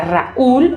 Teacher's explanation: En Raúl tengo una vocal abierta que se une a una vocal cerrada que es tónica. Y además, el que sea tónica se marca porque va con tilde. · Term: hiato